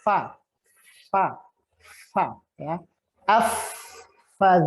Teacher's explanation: gigi seri atas bertemu dengan bibir bagian dalam bibir bawah bagian dalam